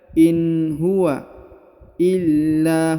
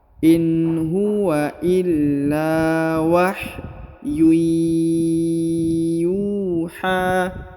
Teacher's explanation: huruf la ditahan ditekan lalu dipanjangkan 2 harokat karena di depannya terdapat alif.